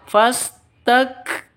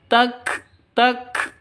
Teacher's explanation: Kalau sukun berarti harus ada hamasnya atau ada ada nafasnya yang keluar. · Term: huruf hamas